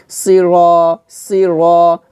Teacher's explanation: তারপর র আলিফ জবর র জবরের বাম পাশে খালি আলিফ আসছে তো এটা মধ্য হরফ, এখানে আমরা এক আলিফ টান দিব,